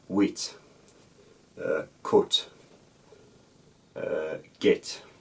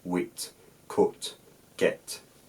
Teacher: Cumbrian was one of those dialects, and still is one of those dialects, that doesn't have pre-glottalization.